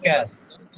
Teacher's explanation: জিহ্বার গোড়া থেকে একটু আগে বাড়াইয়া তার বরাবর উপরে তালুর সাথে লাগাইয়া। দেখেন জিহ্বার গোড়াটা যখন আপনি একটু আগে বাড়াইছেন তারপরে যে উপরে তালুটা সে তালুর সাথে লাগাইয়া দেওয়া হয়েছে, যেমন কি হয়ে হলো কাফ।